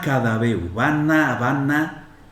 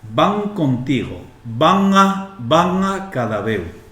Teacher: en asturiano pronunciamos todo esto velar, con el campanín, con el velo del paladar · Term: N velar